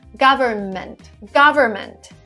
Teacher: we don't pronounce the n in the middle again my explanation would be too many consonants government would be